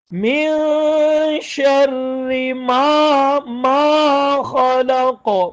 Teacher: را باریک ہوگا کیونکہ پیچھے زیر ہے را کے نیچے